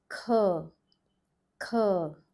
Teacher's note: the A sound that you're noting down here is the closed mouth A, not the open mouth A.